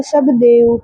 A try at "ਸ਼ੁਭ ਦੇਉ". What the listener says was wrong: ਸਭ ਨਹੀਂ ਹ ਸਾਰੇ ਨੂੰ ਸਭ ਪੜ ਜਾਂਦੇ